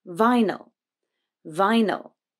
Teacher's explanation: in vinyl the first syllable is stressed vi but the second is unstressed so the y becomes a schwa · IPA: /ə/